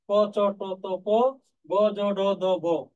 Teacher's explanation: ক চ ট ত প, গ জ ড দ ব, এই দুইটা হচ্ছে অল্প প্রাণ। এগুলো উচ্চারণ করার সময় ফুসফুস থেকে খুব জোরে বাতাস বের হয় না।